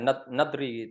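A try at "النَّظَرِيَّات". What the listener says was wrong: Dha-nya di fathah. Nador. Teori-teori.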